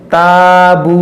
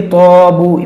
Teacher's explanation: अलिफ से पहले ता जो है ये बारीक हर्फ है तो ये अलिफ बारीक पढ़ा जाएगा। इसको ताबू नहीं कि तोबू, मोटा नहीं करेंगे, इसको हम मोटा नहीं करेंगे।